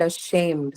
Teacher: the first one is a schwa sound, right? Ashamed. So the second syllable take the stress here.